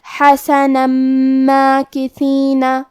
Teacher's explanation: آخری میں نون پہ تنوین زبر ہے، اگر ہم یہ آیت کو اگلی آیت کے ساتھ ملا کے پڑھے تو حرف المیم کلمت ماکثین حروف الادغام میں سے ہے، تو ہم یہ حکم کو غنہ اور تشدید کے ساتھ ادا کریں گے